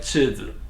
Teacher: chi is the first tone, and zi is actually has no tone. Sometimes some Chinese word is like a 5th tone if you want, no tone.